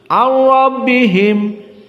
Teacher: idgham nun kepada ra, ar-rabbihim, dan ra-nya dalam keadaan tafkhim